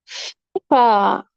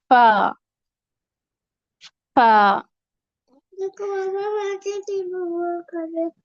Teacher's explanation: دوسرا مخرج کے نیچے والے ہونٹ کا شکم، شکم کہتے ہیں گیلے حصے کو، تو نیچے والا ہونٹ جہاں اندر والی سائڈ سے وہ ہونٹ، اور اس ہونٹ پر جب اوپر کے 2 دانتوں کا کنارہ لگتا ہے، ثنایا علیہ کا جب کنارہ لگے نیچے والے ہونٹ کے گیلے حصے پر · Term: شفویہ